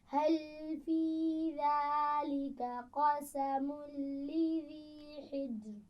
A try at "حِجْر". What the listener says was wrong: حجر نہیں پڑھنا، حجر. کہ جیم پر قلقلہ جب بھی کریں گے یا حروف قلقلہ پر میں نے پہلے بھی بتایا تھا کہ بہت زیادہ سختی سے مت کریں. حجر حجر، ٹھیک ہے.